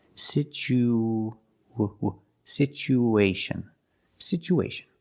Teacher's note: we need to link the oo with the A. So we have an extra sound. It's like a w sound, like a W, to link these two vowels.